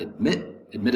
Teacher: admit has two syllables the second syllable has the accent